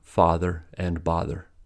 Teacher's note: This phenomenon is called the father-bother merger, since in British English, father and bother have different vowel sounds, father and bother. But in the U.S., both are pronounced with ah sound